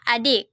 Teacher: bunyi ih dengan ciri-ciri agak tinggi tak bulat